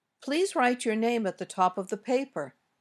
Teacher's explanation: intonation also usually goes down at the end when we make requests or commands